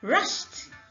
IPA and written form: rʌʃt (rushed)